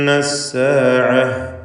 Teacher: നൂൻ മുഷദ്ദദയെ മണിച്ചുകൊണ്ട് ഉച്ചരിക്കേണ്ടതാണ്. 2 ഹറക്കത്തിൻ്റെ അളവിൽ ഗുന്നത്ത് കൊടുക്കണം.